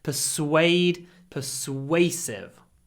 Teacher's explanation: a gap between your lips and your teeth SW pade persuasive if your lips touch your teeth you will say V it's not V it's w you need that Gap